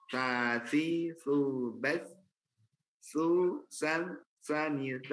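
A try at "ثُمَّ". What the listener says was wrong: Nah, susan itu masih ada desisnya. Susan. Jadi jangan ada desis ya. Jadi huruf sa itu dia bukan kayak huruf sa ya.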